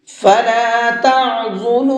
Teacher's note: عین کو حلق سے نکال کر کے پڑھیں گے